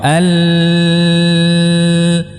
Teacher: suara tadi membelok jalurnya alirannya ya ke arah kanan dan kiri lidah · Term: inhraf